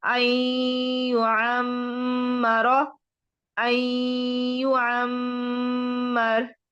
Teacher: یہ مشدد کا غنہ بھی ہوگا اور نون کے بعد یا کا غنہ بھی ہوگا